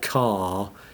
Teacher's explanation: the R phone which is foregrounded at the end of the word